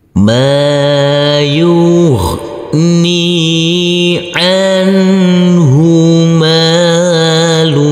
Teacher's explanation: huruf mim kita baca panjang dengan panjang 2 harokat karena huruf mim yang berfathah ini bertemu dengan huruf alif yang tidak berharokat.